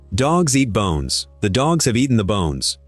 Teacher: They got squeezed. The and have and the are almost not there.